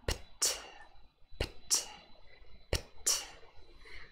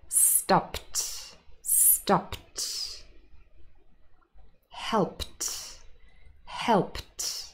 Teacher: that's an unvoiced cluster pt. It's relatively quiet, actually.